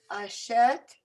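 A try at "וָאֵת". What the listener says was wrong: That's a vav at the beginning. Careful. Vet. This is an aleph, so we only say the vowel. Vet.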